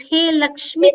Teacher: in Sambodhana, the Dirgha E is becoming Hrasva E